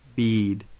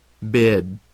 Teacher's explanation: The first word will have the tense E vowel sound, and the second will have the relaxed I vowel sound.